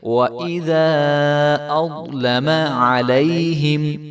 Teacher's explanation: ضا کو خوب موٹا کر کے پڑھیں گے